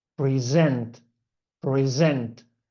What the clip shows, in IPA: prɪˈzent